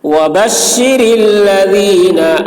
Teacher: را باریک ہوگی، ذال کی آواز باریک